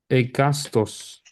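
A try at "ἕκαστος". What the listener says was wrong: Tiene espíritu rudo, Hecastos.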